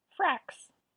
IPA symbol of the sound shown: s